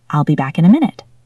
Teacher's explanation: Back ends in a k sound. In starts with a vowel. We link them. Back in ends with an n sound.